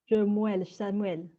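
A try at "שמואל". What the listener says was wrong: Shmuel. Shmuel. Donc ici, le Sheva, il est muet. Shmuel. Shmuel. Le Sheva, là, il est voisé, parce que c'est Shiméon. Shiméon, tandis qu'ici, c'est Shmuel. Vous voyez la différence?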